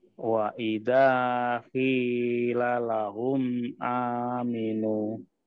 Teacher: Nah, hati-hati Pak, di ki-nya ya. Di ki-nya panjang Pak, ada kasroh bertemu ya sukun ya.